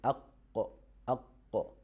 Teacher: The root of our tongue touches the soft palate. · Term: letter qaf